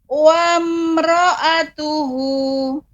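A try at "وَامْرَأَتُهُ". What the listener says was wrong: Ya, tapi mim dibaca tidak lama. Wamro tidak, tapi dibaca dengan jelas. Wamro'atuhu.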